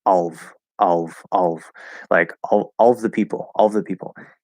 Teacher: can we just kind of drop that schwa sound in of and say of of like all the people all the people